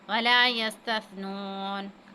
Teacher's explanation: ولا يستثنون، سین کو ہم نے ادا کے سین کو جو ہے سیٹی کی سی آواز آئے گی، اور سا کو جو ہے وہ نرمی کے ساتھ ادا کرنا ہے